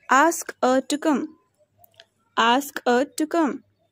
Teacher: Weak form of her is a.